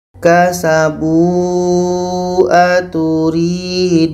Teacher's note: Tanda mad bertemu hamzah dalam 2 kalimah mad jaiz munfasil, panjang 4 sehingga 5 harokat.